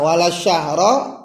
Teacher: alif lamnya ini terlewati, tidak terbaca, tidak ada suara L di situ, maka inilah disebut dengan alif lam qamariyah.